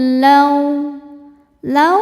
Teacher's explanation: Laqosamul lau lau ada huruf lin sebab ada wau sukun sebelumnya fathah. Cara bacanya dilembutkan.